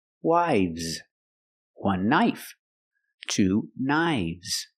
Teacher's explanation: the F changes to a v sound